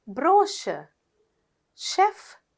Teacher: අනිත් තුනේම CH එකේ sound එක උනේ ෂ